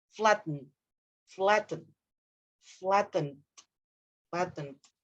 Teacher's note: So you kind of swallow the N.